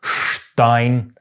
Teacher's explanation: If an S is followed by a T or a P, it’s pronounced “sh”